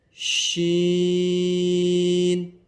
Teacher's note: شین کو بھی کم سے کم 5 الف کی مقدار کھینچ کر پڑھیں گے.